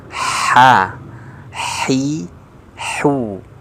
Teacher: Ada ya percikan nafasnya yang menyentuh ke telapak tangan. Ini adalah sifat hams.